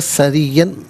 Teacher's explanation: را کے نیچے زیر، را کو باریک کر کے پڑھا جائے گا، سرین، اور وقف کریں گے تو سریہ پڑھیں گے۔